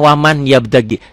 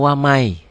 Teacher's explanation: Ya, N-nya berlebur jadi Y. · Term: idgham